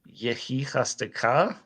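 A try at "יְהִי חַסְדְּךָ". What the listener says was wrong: There's no dagesh in that kaf.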